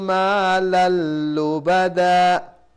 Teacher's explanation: So when we stop, this dan becomes da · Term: waqf ibdal